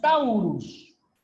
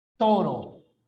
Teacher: ¿Qué significa monoptongación? Que lo que era un diptongo se volvió un solo sonido. Por ejemplo, en latín es taurus, pero en español es toro.